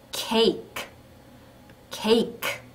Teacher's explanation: 뒤에 더 이상 아무 소리도 없기 때문에 크 하고 소리를 다 내 주시면 됩니다